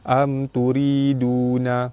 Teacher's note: Mim mati bertemu dengan ta, hukum dia izhar syafawi terang jelas tanpa dengung.